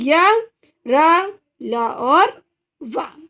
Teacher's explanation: अंतस्थ व्यंजन कौन से होते हैं, इन व्यंजनों को उच्चारण स्वर एवं व्यंजन के बीच होने के कारण इसे क्या कहेंगे, अंतस्थ व्यंजन। और इनका उच्चारण करते समय जीभ मुंह के किसी भी भाग को पूरी तरह स्पर्श नहीं करेगी